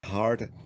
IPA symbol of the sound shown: ɑ: